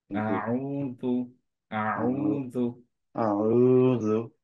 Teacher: খেয়াল করো যে দু, দু খুব অল্প টাচ করবে, হ্যাঁ, সফট